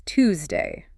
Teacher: In RP, the textbook way, it's Tuesday, a distinct T and Y. But in estuary and cochnney, that T and Y sound crash together and merge into a C.